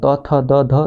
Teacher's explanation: फिर त वर्ग त थ द ध दंत से निकलता है